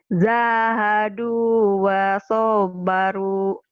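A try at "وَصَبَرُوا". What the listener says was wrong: Soknya pendek. Jahadu wa sabaru.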